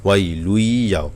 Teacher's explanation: ইয়া হলো ঈদগামের একটি অক্ষর, ঈদগামের বাগুন্না 4টি হরফের মধ্যে একটি হরফ হলো ইয়া, এখানে গুন্না করতে হবে।